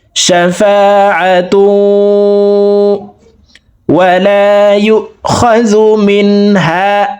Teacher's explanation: দেখুন তানউইনের পরে ইদগামে বা গুন্নার হরফ ওয়াও আসছে এই কারণে এই দুই পেশওয়ালা তাটি তাসদিদওয়ালা ওয়ার সাথে গুন্নার সহিত মিলাইয়া পড়ব